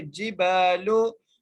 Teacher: با کو ایک الف کی مقدار کھینچ کے پڑھیں گے